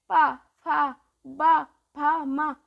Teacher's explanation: ये क्या है, देखो जीभ हम लोग के ओंठ से बोल रहे ना, ओंठ स्पर्श हो रहे हैं आपस में, तो ये हो गया ओष्ठ